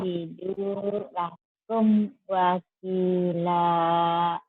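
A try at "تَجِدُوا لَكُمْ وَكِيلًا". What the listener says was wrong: Entar dulu, itu belum pas. Tajidu lakum wakila. Kinya panjang juga Mantobi.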